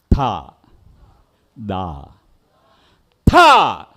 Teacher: ത എന്ന് പറയുമ്പോൾ നാക്കിന്റെ അറ്റത്ത് മേൽവരിപ പല്ലും കീഴ്വരിപ്പല്ലും തൊടണം തൊടുന്നതിന്റെ ബലം അനുസരിച്ച് അക്ഷരത്തിന്റെ ഉച്ചാരണം മാറും ത പറഞ്ഞേ തഥ ദ ഥ